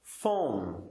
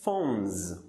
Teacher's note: Observe que o último som, então, vibra. As cordas vocais vibram. Fica como phones.